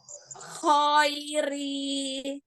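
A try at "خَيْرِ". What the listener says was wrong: Ya, jangan ditarik ke samping, tapi ke depanin. Khairi. Ketika khairi, jangan gini. Khairi. Nggak pakai senyum. Dia hanya turun rahang. Khairi. Nggak senyum. Tapi khairi. Ke bawahin.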